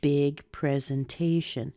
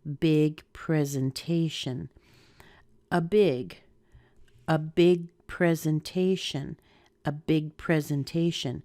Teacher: Now, big has some stress too, but not as much as te.